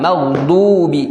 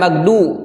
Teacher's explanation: Dan huruf kata maghdu itu huruf dod itu tebal. Maghdubi. Jangan magdu.